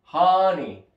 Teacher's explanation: lo leemos tal cual será Honey pero es Honey con la con la a bien abierta con la boca bien abierta al pronunciarla